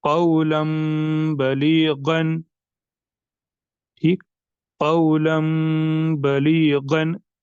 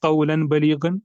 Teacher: पर नून साकिन के बाद यानी तनवीन में जो नून साकिन छुपा होता है उसके बाद यहाँ पर बा आ रहा है, तो यहाँ पर भी होगा इक़लाब, यानी इसमें जो नून साकिन है ये कन्वर्ट हो जाएगा मीम साकिन में, और साथ में होगा गुन्ना